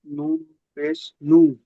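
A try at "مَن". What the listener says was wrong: মিম নুন পেশ নেই, দেখেন মিম নুন জবর মান।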